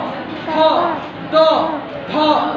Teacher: ता जब बोलोगे ना तो जीभ जाकर के दांत को मारेगा, तब आवाज निकलती है। तो थ, द, ध, सब में जाकर के जीभ जाएगा, दांत में मारता है, फिर आवाज बाहर निकलता है।